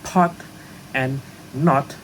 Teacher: In the British English, the alphabet O, as in pot and not, are pronounced with the sound O. The sound is produced by lowering our tongue and position it on the back of our mouth, while our lips are rounded.